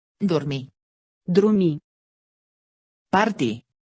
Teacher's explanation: Le R de l'infinitif, lui, est systématiquement muet.